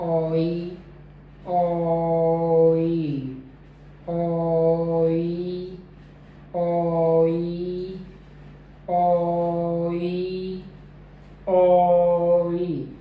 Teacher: तो जो ओ साउंड है, तो पहले जो मेरी ओ साउंड है उसमें मेरे लिप राउंड रहेंगे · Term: Oi diphthong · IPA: /ɔɪ/